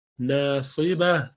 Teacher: صاد موٹا پڑھیں گے ، آخر میں ہاں کی آواز رہنی چاہیے، ناصبہ، باہ، باہ،